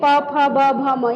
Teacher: अब प भ म ये तो सबसे हल्का है। ओष्ठ से प फ ब भ म यानी पूरे प वर्ग का उच्चारण हो गया ओष्ठ।